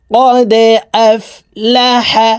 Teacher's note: দাল কলকলার হরফ নিচের দিকে ধাবিত করে ধাক্কা দিয়ে উচ্চারণ করতে হবে